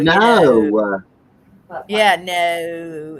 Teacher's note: they draw out their last syllable of their word